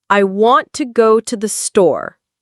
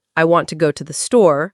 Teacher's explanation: Stress on want. Go. Store.